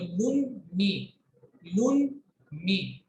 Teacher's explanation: पहला वर्ड देखिए आप, लाम के ऊपर दो पेश की तनवीन है, आगे मीम है। कायदा हमारा कहता है कि तनवीन के बाद अगर मीम आती है तो तनवीन की आवाज को मीम के साथ मिक्स करके गुन्ना करके पढ़ते हैं। अलग अलग इनको नहीं बोलना है, मिक्स करके ही बोलना है।